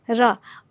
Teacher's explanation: वो जीभ जो है हमारी वो मुड़ जाती है, और मुड़ने के बाद उच्चारण निकलता है, और आगे जो जीभ का जो अग्रभाग होता है वो थोड़ी कांपते हुए बाहर निकलता है। आप जैसे उच्चारण करके देखें, र में आगे की जो जीभ की जो अग्रभाग है वो थोड़ा सा थरथराहट के साथ में उस ध्वनि को निकालता है, तो इसलिए इसको लुंठित व्यंजन कहते हैं।